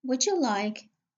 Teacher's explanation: Te plus ye equals che. De plus ye equals je.